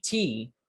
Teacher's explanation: brain sends instructions to your anatomy that you need to make a voiceless alveolar stop and then a high front unrounded vowel